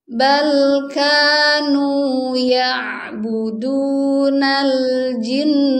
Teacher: bacaan gunnah di nunnya itu tetap harus ada ya. Jangan sampai karena berwaqaf di sini nggak ada gunnahnya. Ini tetap harus ditahan dulu.